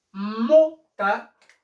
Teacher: Mota, la pronunciación, la mayor intensidad de voz, ¿dónde está? En mo, ¿cierto? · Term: acento prosódico